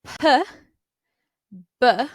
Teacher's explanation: you can tell that there's a little bit more vibration in your larynx here with B than P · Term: voiced